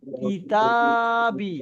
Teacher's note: আলিফ মাদ্দার কারণে তা টা টান হচ্ছে